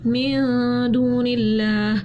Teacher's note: ہم نے اخفا کیا کیونکہ نون ساکن کے بعد دال آ رہی تھی تو ہم نے اخفا کر دیا. · اللہ کے نام سے پہلے زیر آ رہی تھی، اللہ کے نام کو ہم نے باریک پڑھا